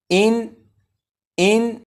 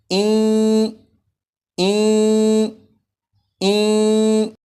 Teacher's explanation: नून साकिन को या में इदगाम करके पढ़ेंगे